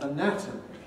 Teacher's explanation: the letter a at the beginning of anatomy stands for schwa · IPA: əˈnætəmi